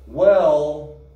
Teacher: when says well she drags this out with a long vowel sound